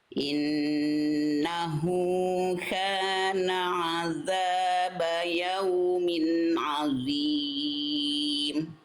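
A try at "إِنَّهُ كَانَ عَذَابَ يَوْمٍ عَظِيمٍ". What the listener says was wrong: Tebalkan lagi sedikit lagi huruf donnya Bunda.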